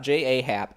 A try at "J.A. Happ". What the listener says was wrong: Well, it's also not, it's not, it's the A is silent, but that's his name. It's J Happ.